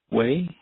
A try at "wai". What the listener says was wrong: You know, it looks like it would be pronounced that way because it's W-A-I. But the W in Hawaiian in this context is like a V, so we'd say vai.